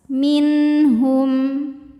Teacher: nun sukun menghadapi huruf halqi atau huruf tenggorokan yaitu ha. Cara bacanya nun sukun dibaca jelas.